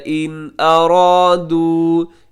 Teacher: ان ارادو میں نون ساکن کے بعد حمزہ ہے جو کہ حروف حلقی میں سے ہے، یہاں اظہار حلقی ہوگا